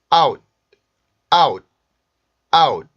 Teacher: 그 치조 부분에 혀를 붙였다가 공기를 터트리는데 무성음이기 때문에 공기가 그 성대 울림이 나오지 않고 순수한 공기만 터지게 돼요. 그리고 여기에 있는 위치가 지금 종성 끝소리의 위치에 있기 때문에 공기를 터트려주지 않는 게 조금 더 자연스럽습니다. · 그리고 여기에 있는 위치가 지금 종성 끝소리의 위치에 있기 때문에 공기를 터트려주지 않는 게 조금 더 자연스럽습니다. 그래서 out 이렇게 발음하는 것보다는 out 이렇게 발음하는 경우가 일반적입니다.